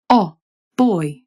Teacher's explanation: Then there was I as in sigh, which started all the way at the back of your mouth, sigh, and oi as in boy, which started fairly low in your mouth